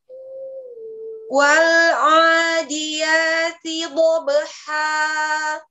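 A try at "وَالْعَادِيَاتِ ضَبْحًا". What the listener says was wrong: Wal'a, ain tipis. Baik, buat tekan lagi pinggir ya. Bawah lagi.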